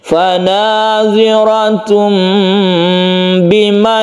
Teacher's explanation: Suara dari tanwin itu berubah menjadi mem, maka di sini dituliskan mem yang kecil. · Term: iklab